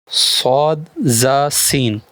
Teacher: जबान की नोक और दोनों दांतों के अंदरूनी किनारे से अदा होते हैं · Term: रूफ सफीर